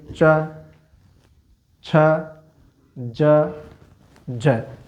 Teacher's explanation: हम च बोलेंगे तो हमारी जीवा कहां स्पर्श कर रही है? तालु को।